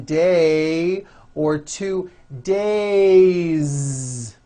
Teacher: have one day or two days it's not day Sun voice it's days with a voiced Z ending